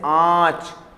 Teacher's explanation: ऐसा लगता है जैसे हमारे मुंह से, कंठ से और नाक से एक साथ म या न की ध्वनि निकल रही हो, जैसे आंच। तो आंच बोलते समय हमारी नाक से भी ध्वनि आई थी और कंठ से भी आई थी, दोनों से एक साथ आई थी। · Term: चंद्रबिंदु